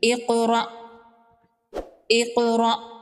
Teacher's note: قاف ساکن ہے تو قاف ساکن پر قلقلہ ہوگا · را پر زبر ہے، را کو پر پڑھیں گے۔ حمزہ ساکن کو جھٹکے سے پڑھیں گے